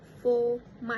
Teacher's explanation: observe in this response are in the sentence for my was pronounced as for my instead of for my. The participant dropped the r sound in the word for. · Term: r elision